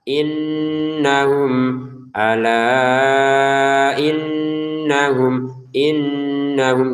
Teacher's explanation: Innahum kita dengungin dan tahan dengungannya ya.